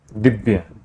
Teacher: द का उच्चारण स्थान है दंत दंत को हम लोग कहां से बोलते हैं दांत से बोलते